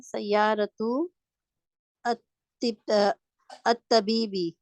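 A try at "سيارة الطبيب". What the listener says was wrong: मिला के पढ़िए, अलिफ लाम आ जाए तो मिला के पढ़ते हैं। सय्यारतु तबीबी, अलिफ नहीं पढ़ा जाएगा। अलिफ ही, लाम भी खाली है, अलिफ भी खाली है। जो खाली होते हैं लेटर्स उनको नहीं पढ़ा जाता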